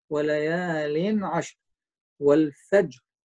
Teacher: والفجر هنا أكو قلقلة صغرى بالجيم